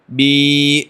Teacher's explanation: بیچ زبان اور تالو کے درمیان خالی حصہ رہے گا، وہاں سے وہ یا مدہ نکلے گی. جیسے با یا زیر بی، دیکھیں بیچ زبان تالو کا کوئی میل جول نہیں ہے.